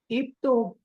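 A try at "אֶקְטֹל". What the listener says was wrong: It is not ik. It is not ik. It is a because it is segol. Ecto. Okay, so all the Shivas mentioned here are silent Shivas, not vocal Shiva.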